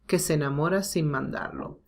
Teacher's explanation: Because enamora, the stress is in mo, not in e, like the previous example. So here we have two identical sounds that are not stressed, so we omit one